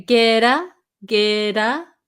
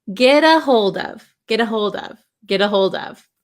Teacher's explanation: maybe you notice this T sound sounds more like a D sound